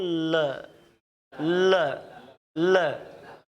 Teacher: जीभ उठ गई और हवा अगल बगल से निकल गई, क्योंकि जीभ ने मुख को क्या कर दिया? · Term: पार्श्विक व्यंजन